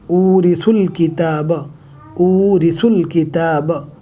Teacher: اب دیکھ سکتے سا کے بعد واو ہے، لیکن واو کے اوپر جزم نہیں ہے، لہٰذا واو نہیں پڑھا جائے گا۔ واو الف الف، سا کے پیش کو ڈائریکٹ لام سے ملانا ہے۔